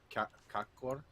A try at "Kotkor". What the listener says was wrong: No, there's a T in there, right? Kotkor.